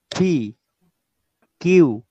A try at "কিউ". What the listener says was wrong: এটা কিউ না, এটা হলো খিউ, খিউ, খ দিয়ে খিউ।